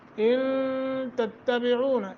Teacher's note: ان اخفا ہوگا نون ساکن کے بعد تا حروف اخفا میں سے